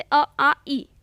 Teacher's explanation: निर्नुनासिक है जिसमें हवा केवल मुंह से निकलती